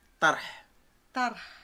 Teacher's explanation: le H expiré au fond de la gorge